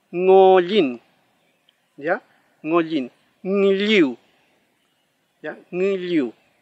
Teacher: se pronuncia como una sola consonante no separado